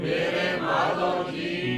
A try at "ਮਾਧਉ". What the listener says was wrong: ਊੜੇ ਨੂੰ ਔਂਕੜਾ ਜੇ ਮਾਧੋ ਕਵਾਂਗੇ ਤੇ ਧਦੇ ਨੂੰ ਹੋੜਾ ਲੱਗਣਾ ਊੜਾ ਨਹੀਂ ਬੋਲਿਆ ਜਾਣਾ ਮਾਧਉ